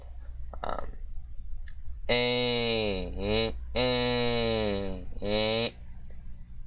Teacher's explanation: Now we have a nasalized E, so the nasal front mid close unrounded vowel.